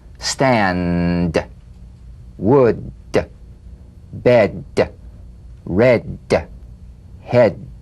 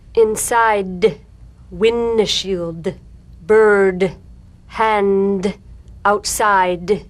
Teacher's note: Be sure you feel vocal cord vibration, lots of vibration in the tongue. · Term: drum beat D